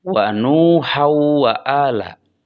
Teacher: Dan waw itu adalah huruf idgham. Sehingga tanwinnya dimasukkan ke dalam waw. Dibacanya menjadi wa nuhau wa ala.